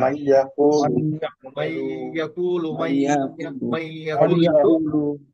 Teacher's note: ঈদগাম মানে কি মিলিয়ে পড়া, ম ম মানে মিলিয়ে, ম ইয়ার মানে ইয়ার সাথে করতে হবে মিলিয়ে, মিলিয়ে পড়তে হবে।